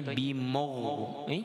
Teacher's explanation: nak sebutnya mim tidak ada penebalan di situ.